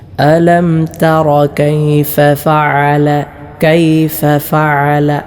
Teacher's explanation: രണ്ട് ഫാകൾ അടുത്തുവന്നു പ്രത്യേകം ശ്രദ്ധിക്കണം രണ്ടിനെയും വ്യക്തമാക്കി തന്നെ ഉച്ചരിക്കണം